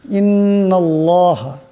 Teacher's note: এই নুন এই আল্লাহ লামকে ধরবে, আল্লাহ লামের ডাইনে নুনের উপর জবর আসছে, আল্লাহ লামকে মোটা আওয়াজে পড়তে হবে।